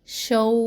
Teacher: شین تنوین کو واو تشدید سے ملانا ہے. شو، واو پر دھیان رکھے آواز ناک میں نہ جائے.